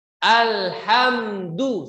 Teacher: Menyempurnakan harokat dhamma pada huruf dal untuk kesempurnaan harokat, dan perhatikanlah bahwa huruf dal letaknya di ujung lidah yang bersentuhan dengan gusi pada gigi seri atas dan bukan seperti huruf D dalam bahasa Indonesia yang ujung lidahnya menyentuh langit-langit atas